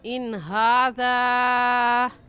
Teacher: और इस मद को हम 3 अलिफ के बराबर खींचेंगे, इससे कम या ज़्यादा नहीं खींचेंगे। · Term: मद्दे मुनफसिल